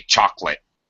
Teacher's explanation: We drop that middle syllable